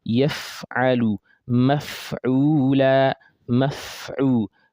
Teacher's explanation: so that we hear that air that comes out with fa properly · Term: fa with sukun